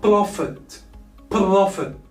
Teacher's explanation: The stress here is on the first syllable.